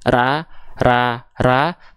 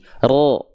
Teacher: inilah yang membuat momentum vokal a pada fathah ketika dilafalkan karena lidahnya naik pangkal lidahnya keluarnya terdengarnya bukan a lagi tapi seperti o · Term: vokal tebal